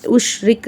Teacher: ராக்கு கீழ ஜேர் இருக்கு ராவ நம்ம வந்து லைட்டா ஓதணும்